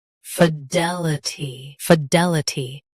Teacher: Both US and UK have the same pronunciation of this word. Stress D. Keep L soft and clear.